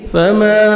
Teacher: الف مد ہے 1 سیکنڈ میم کو کھینچیں گے